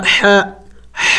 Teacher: حا حروف حلقی میں سے ہے، حلق کے درمیانی حصے سے ادا ہوتا ہے